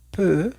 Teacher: la e con la u lo vamos a leer como una e con la boca cerrada en francés